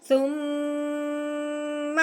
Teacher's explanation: اب شد کی وجہ سے اپنے سا کو میم کے ساتھ ملانا ہے۔ جب شد میم کے اوپر آتی ہے تو جو پچھلے والا حرف میم کے ساتھ ملتا ہے تو ساتھ ساتھ ایک الف کے برابر غنہ ہوتا ہے۔